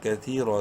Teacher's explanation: لمبا کریں گے یا مدہ کی وجہ سے، کتھی رو زبر رو کو منہ بھر کے پڑھیں گے زبر کی وجہ سے